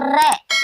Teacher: यानी उच्चारण करते हैं तो हमारी जीभ में 2 या 3 बार क्या है? कंपन होता है